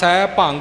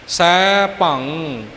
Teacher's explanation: ਜਦੋਂ ਆਪਾਂ ਭੱਬੇ ਉੱਪਰ ਟਿੱਪੀ ਬੋਲਾਂਗੇ, ਇਸ ਦੀ ਆਵਾਜ਼ ਸਾਡੇ ਗਲੇ ਵਿੱਚ ਖਤਮ ਹੋਵੇਗੀ।